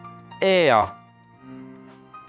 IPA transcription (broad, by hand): eə